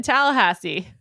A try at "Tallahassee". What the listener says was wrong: Wow, the way you said Tallahassee was weird. I feel like the emphasis was in the wrong spot. Tallahassee? You said Tallahassee. It's like when people say Kissimmee, Florida, where Disney is. Kissimmee.